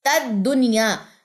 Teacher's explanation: نون ساکن کے بعد یا اسی کلمے میں آ رہا ہے تو یہاں پہ کسی قسم کا ہم نے ادغام نہیں کرنا۔ اگر نون ساکن کے بعد یا دوسرے کلمے میں آتا تو ہم یہاں پہ ادغام مع الغنہ کرتے، تو یہ سمپل اظہار ہی پڑا جائے گا دنیا۔